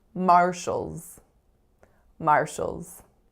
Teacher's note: of the vowel I'm making schwa so we have Shoals so we have our consonant we have schwa then we have dark L Z